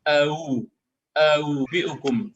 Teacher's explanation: Kemudian kalau tashilnya itu dari harakat dhammah, artinya huruf hamzah yang berharakat dhammah, maka huruf yang dibaca tashil itu antara huruf hamzah dan waw